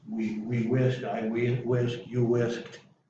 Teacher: The T, you get the T sound. K is one of those that pushes the ED into a T sound.